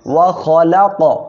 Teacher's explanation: ওয়াও জবর ওয়া, খ জবর খ, লাম কফ জবর লা ক। কফ কলকলার অক্ষর সাকিন অবস্থায় আছে, ধাক্কা দিয়ে পড়তে হবে